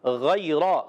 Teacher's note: غیرہ میں غین کو پر رکھنا ہے، حرف مستعلیہ میں سے غین حلق کے اوپر والے حصے سے غین اور خا ادا ہوتے ہیں